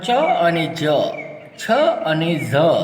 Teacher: ચ અને જ, છ અને ઝ એ તાલવ્ય તાલુ દ્વારા બોલાય છે